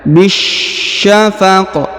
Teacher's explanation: huruf qaf karena berada di ujung ayat atau di ujung bacaan, maka disukunkan sehingga dibaca pantul